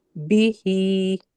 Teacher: standing کسرہ کو ہمیں کھینچ کے پڑھنا ہے، اور با حرکت ہے، اس کو بالکل بھی نہیں کھینچنا ہے